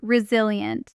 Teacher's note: resilient carries its stress on the second syllable.